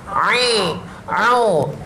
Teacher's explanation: Kita kawal suara ain keluar tenggorokan.